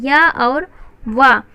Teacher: जो य और व है, यह बिना स्पर्श किए सीधे बोल दिए जाते हैं। इस कारण इन्हें कभी कभी इसी वजह से इन्हें अर्ध स्वर भी कहा जाता है।